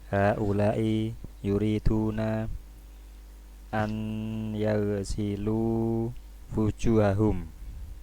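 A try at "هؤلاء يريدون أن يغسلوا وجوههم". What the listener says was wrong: Naam.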